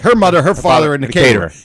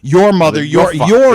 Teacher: even though they're both one syllable, your takes a little longer to say. It's a longer word.